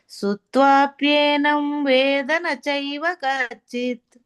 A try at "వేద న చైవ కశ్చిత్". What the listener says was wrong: వేదన అనొద్దన్నారు కదా. వేద వేదన అంటే ఇంకో అర్థం